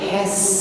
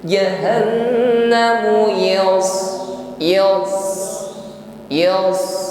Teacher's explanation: Has ringan tipis ketika mengucapkan sin sukun, beda halnya dengan shad sukun, nampak bunyi atau suara yang menebal.